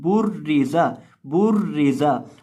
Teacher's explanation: ज़ा के अंदर आपने सीटी की आवाज़ पैदा करके पढ़ना है